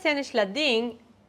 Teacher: Now when I said sen ishla ding, the I is a little longer than in dim.